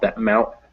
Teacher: That T actually kind of disappears and it just becomes that little stop